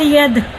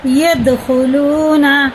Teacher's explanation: قلقلہ ہے، سخت پڑھتے ہیں، اس کے مخرج ٹکر کھا کے الگ ہو جاتے ہیں